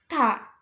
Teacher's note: Coba kita sebutkan, ta, ujung lidah ditaruh di gusi, ta. Infijar, adanya letupan sedikit, letupan kecil ketika mengeluarkan bunyi ta.